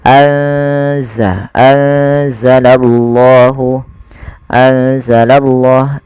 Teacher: salah satu huruf ikhfa yaitu huruf Zaid maka cara membacanya yaitu memasukkan nunnya atau menyamarkan nunnya kepada huruf z ya anza langsung kepada makhj daripada huruf z anza anzalallahu anzalallah